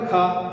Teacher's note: खा में वायु ज्यादा निकल रही है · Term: महाप्राण